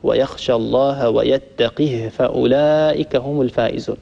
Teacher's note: وأبو عمرو رحمه الله يكسر القاف ويسكن الهاء